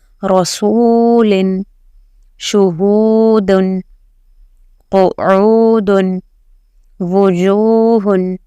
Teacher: You have to drag the su because it has a waw maddah.